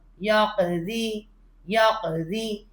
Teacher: ضاد سب سے موٹا ورڈ ہے، منہ بھر کے پڑھا جانے والا